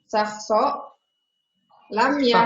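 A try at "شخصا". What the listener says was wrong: pakai tanwin sahson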